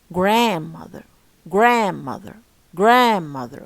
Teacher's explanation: word made up of two parts okay Grand and mother but the stress and the strong part is the uh first part which is uh uh Grand